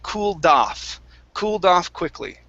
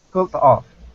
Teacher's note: So what you do is you stick the D at the beginning of off.